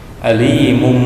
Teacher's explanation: Cara membacanya adalah mendengung, berbunyi huruf mim, panjangnya 2 harokat. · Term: iqlab